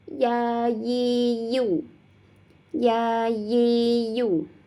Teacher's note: dari tengah lidah bertemu dengan langit-langit atasnya